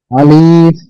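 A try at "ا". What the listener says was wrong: টান হবে না আলিফ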